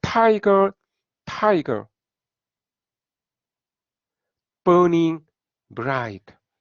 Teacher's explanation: 스트레스가 있는 그 음절이 오고 나서 그 다음에 스트레스가 없는, 그러니까 스트레스가 약한 이 실러블이 오는 것이죠. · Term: 트로키